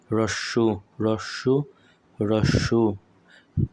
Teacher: তারপর যদি রস্যু উচ্চারণ করি তাহলে আমাদের জিভটা পিছনের দিকে চলে যাবে। রস্যু রস্যু রস্যু।